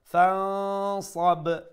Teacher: again আমরা এখানেও নুন সাকিনে ইখফা করে pronounce করবো ফানসাব and the ba is pronounced with a qalqala due to the ba having a jazm sukun on top of it